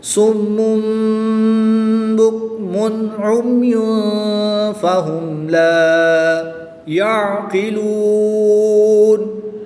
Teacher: میم مشدد میں ہمیشہ غنہ ہوتا ہے، یہاں پر غنہ کریں گے۔ تنوین کے بعد با آ جائے تو اقلاب ہوتا ہے، تنوین کو میم سے بدل کر غنہ زمانی کر کے پڑھیں گے۔ میم مشدد میں غنہ آنی کریں گے اور تنوین میں غنہ زمانی کر کے پڑھیں گے۔